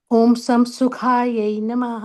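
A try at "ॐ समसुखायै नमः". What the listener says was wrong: Not Samsukha, it is Samasukha. Om Sama fully, unlike Hindi. Om Samasukayai Namaha.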